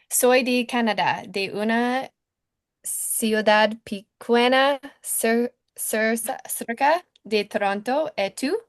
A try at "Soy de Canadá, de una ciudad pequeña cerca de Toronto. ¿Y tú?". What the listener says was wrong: Perfecto.